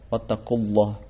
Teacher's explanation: ada lafaz Allah yang dimana lamnya dibaca tebal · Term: lam tebal